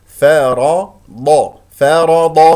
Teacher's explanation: فمن فرض هكذا ا الراء مفخمه من كلمه فرض لانها مفتوحه والضاد مفخمه مرتبه ثانيه لانها مفتوحه